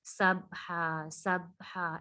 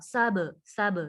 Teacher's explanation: سبحا سب سب، دیکھیے نا اس میں ایکو کی ساؤنڈ آ رہی ہے. سب آواز جو ہے وہ لوٹتی ہوئی فیل ہو رہی ہے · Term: قلقلہ